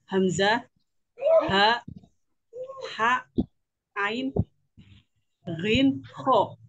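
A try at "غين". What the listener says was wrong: Bukan ghin, tapi ghoin ya, ghoin.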